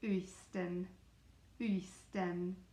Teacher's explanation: The tongue is really far forward and the lips come together